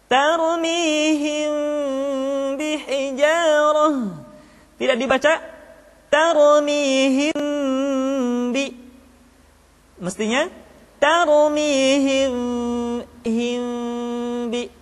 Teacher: tetapi mim mati bertemu dengan ba mesti dibaca dengan sempurna caranya kita baca mim dengan suara yang samar caranya kedua bibir kita direnggangkan tidak sampai rapat secara sempurna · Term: Ikhfa Syafawi